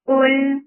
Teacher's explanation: Qul, qaf is heavy for dhamma, circling lips, attach it lam, now you get sifa of the wasut. Make qaf heavy, but keep lam light.